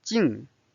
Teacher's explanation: the first tone it's of the flat tone jing is this fourth tone it's a falling tone